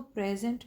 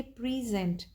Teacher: But when we से प्रेजेंट, तो यहाँ पर हमारा स्ट्रेस शिफ्ट हुआ विद इन द वर्ड, एक सिलेबल से दूसरे की तरफ, तो वो प्रेजेंट से प्रेजेंट बन गए, यानी एक नाउन था अब वो एक वर्ब बन गया है। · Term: वर्ड स्ट्रेस